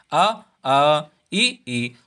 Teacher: इसमें नाक का कोई भी महत्व नहीं है, अर्थात इसमें नाक का कोई रोल नहीं है, नाक से हवा नहीं निकलती, केवल हम मुंह से ही इन शब्दों को, इन अक्षरों को बोल सकते हैं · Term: निरनुनासिक स्वर